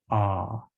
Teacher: the jaw is as wide open as it's going to get in producing a vowel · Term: first mid vowel